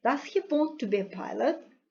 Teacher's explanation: So here important words are want and a pilot. So the stressed words are want and pilot. Generally they are pronounced very distinctly.